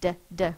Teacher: My tongue is tapping behind my teeth.